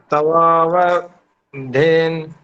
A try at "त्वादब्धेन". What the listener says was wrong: त्वादब्धेन, त्वादब्धेन ऐसे बोलो। व नहीं है जी, द है। त्वादब्धेन, द है द। हाँ ये तो त्वा तो ठीक बोल रहे हैं, है दब्धेन।